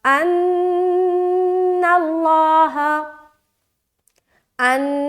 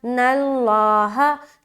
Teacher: ان نون مشدد کا غنہ، ناللہ، لفظ اللہ کا لام موٹا کیونکہ یہاں پر زبر ہے